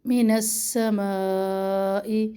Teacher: نون کو سین سے ملائے، سین میں سختی ہے. اور ما پر مد ہے 2 الف کے برابر لمبا کریں گے.